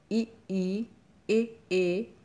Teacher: जिन स्वरों के उच्चारण में जीभ का अगला भाग काम करता है वे अग्रस्वर कहलाते हैं